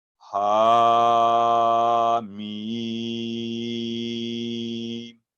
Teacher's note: ہا 2 سیکنڈ کی لمبائی کے ساتھ علیحدہ، اور میم 4 سے 5 سیکنڈ اس کی لمبائی علیحدہ، ساتھ اپنے میں ادغام نہیں ہوا، مکس نہیں ہوں گے۔